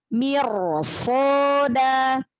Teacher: ro sukunnya dibaca tafkhim, dibaca tebal. Maka tebalkan lagi. Mirsoda, angkat pangkal lidahnya.